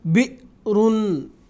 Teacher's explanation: جھٹکے کے ساتھ حمزہ کی ادائیگی ہوتی ہے، یعنی حمزہ جب اس پر جزم آئے. تو اس لیے میں نے بئرن ایسا جھٹکے کے ساتھ اس کی ادائیگی کی ہے.